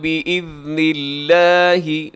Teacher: لفظ اللہ باریک، اس سے پہلے نون کے نیچے زیر ہے تو اسے رکھیے گا باریک